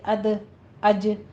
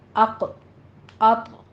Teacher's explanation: جو باریک حروف ہیں یعنی دال اور جیم، اس پر باریک قلقلہ ہوگا